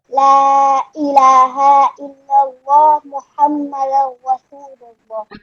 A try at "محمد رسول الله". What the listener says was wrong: محمدر نہیں، محمدر رسول اللہ، ٹھیک ہے؟